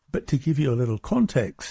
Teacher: You hear how he goes up and stresses the word context. And it's all going downhill before that. But to give you a little context, and then spikes at the end of the clause with context.